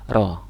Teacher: Ro itu ada di termasuk dalam ujung lidah, tapi agak ke belakang dan dia bergetar. Huruf ro ini getarnya cukup 2 kali saja sebenarnya. Ro. Jadi lidahnya bergetar ro.